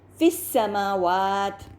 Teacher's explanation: تو یہاں پر پہلا اگلے لفظ کا پہلا پڑھا جانے والا حرف سین مشددہ ہے، یعنی کہ سین ساکنہ اور پھر سین مفتوحہ. یہ دو سین ایک ساتھ آ رہے ہیں، چنانچہ دو ساکن حروف ایک ساتھ آ رہے ہیں یعنی کہ یا مد اور سین ساکنہ. · اس لیے دو لفظوں میں التقاء الساکنین کے پہلے قاعدے کے مطابق یا مد کو ساقط کر کے فا کسرہ کو سین سے ملا کر پڑھا جائے گا